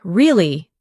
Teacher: when you ask a question like, Really? your voice goes up slightly at the end. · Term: Intonation